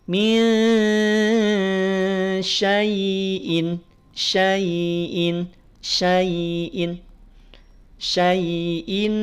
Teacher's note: jika bacaannya dilanjutkan maka Ya Sukun posisinya sebagai harfulin y-nya dibaca lunak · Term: harful lin